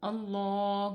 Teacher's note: اللہ کے لام سے پہلے زبر آ گیا ہے، تو اس کو ہم پر پڑھیں گے یعنی کہ موٹا پڑھیں گے